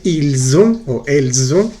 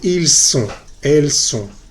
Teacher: vibra la última S con la O, ils ont o elles ont, y la segunda se dice ils sont, elles sont, no vibra. Una sí vibra, otra no vibra.